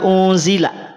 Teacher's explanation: Hamzah itu hurufnya tipis nun sukun juga tipis Zai juga tipis lam juga tipis tidak ada huruf yang tebal di antara empat huruf ini ya